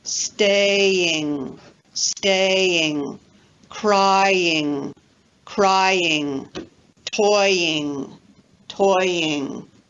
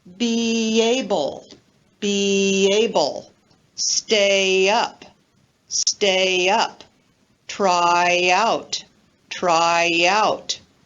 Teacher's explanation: we use a y glide when we link vowel to vowel following the front vowels e a i and also the diphthong oy either inside a word or between words so for example word